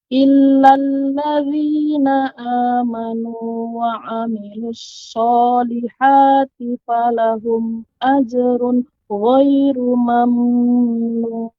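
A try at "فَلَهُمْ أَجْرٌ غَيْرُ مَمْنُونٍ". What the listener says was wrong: Nah, untuk pengucapan mamnun, tidak boleh panjang mim yang berharokat sukun. Tidak boleh mamnun. Yang benar, mim mati bertemu dengan nun adalah izhar syafawi. Jadi, ajrun ghairu mamnun. Mamnun. Tidak mamnun. Nah, ini keliru.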